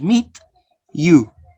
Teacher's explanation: Ch is an affricate sound, voiceless.